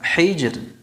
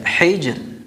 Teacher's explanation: maka hukum ra-nya tarqiq, tipis